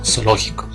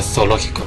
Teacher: Aquí en Ecuador, pues, si nosotros pues pronunciamos pues zoológico, pues la Z suena como S